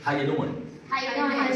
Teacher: how are you become like just one sound, just one word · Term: one sentence